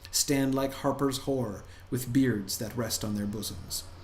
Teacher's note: did you hear the caesura in the middle, right? That pause in the middle, and and you could kind of feel the rhythm of it, right?